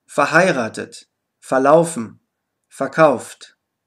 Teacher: Die Vorsilbe FER wird häufig einfach FA ausgesprochen.